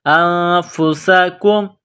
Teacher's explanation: تخرجون انفسکم، حمزہ کو نون کے ساتھ ملانا ہے، نون ساکن کے بعد فا ہے، حروف اخفا ہے، تو یہاں نون ساکن پر غنہ کریں گے، آواز ناک میں چھپائیں گے۔ انفسکم، سین میں سی ٹی کی آواز پیدا کریں گے، سین کو باریک کریں گے۔